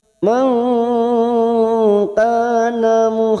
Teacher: Nun sukun bertemu kaf, ikfa hakiki. Kita samarkan bunyi nun sukun 3 harakat.